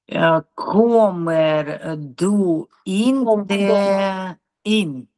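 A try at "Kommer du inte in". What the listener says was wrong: Опять ударение. Комер Комер ду инте ин.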